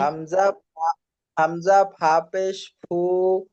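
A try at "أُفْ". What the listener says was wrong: উফ কেন ভাই? টান হবে কেন ভাই? উফ।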